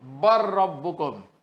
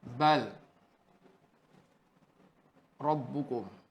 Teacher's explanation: Idgham kamil tetapi tidak dengung. Kerana tidak ada mim syadah dan nun syadah, tak boleh dengung.